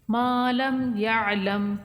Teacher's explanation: میم کو کھینچیں گے ایک الف کے برابر